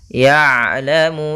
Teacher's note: Ain itu ada sifat namanya sifat bainiyah, tengah-tengah antara syiddah dan rakhawah, yaitu kalau syiddah suaranya tertahan, kalau rakhawah suara mengalir, tapi ain di antara kedua-duanya